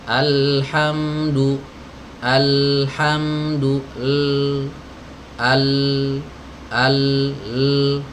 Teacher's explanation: suara huruf lam sejenak jadi jangan langsung pindah alhamdulillah alhamdulillah salah harus di alirkan dulu huruf lamanya sejenak suaranya dialirkan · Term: aliran suara